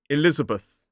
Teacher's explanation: Four syllables. The stress is on the second syllable. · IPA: /ɪˈlɪzəbəθ/